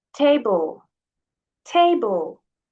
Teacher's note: So the first part, TA, is stronger. Here we have two syllables, and the first one is stronger than the other one. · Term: stress